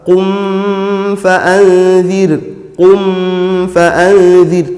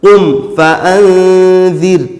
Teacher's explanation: Kitu kingine ambacho napenda kutanabahisha katika upande huu ni pale ambapo mim sakin inakutana na fa au inakutana na waw. Ikikutana na hizi herufi mbili, basi unatakiwa ufanye idhhar iliyokamilika zaidi.